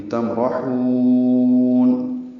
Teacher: تمرحون، اب میم ساکن پہ اظہار ہے، را پر ہے، ہا کو لمبا کریں گے وقفاً، مد عارض سکون بنے گی